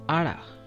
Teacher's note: Ada, like out of. Out of. We skip the T sound.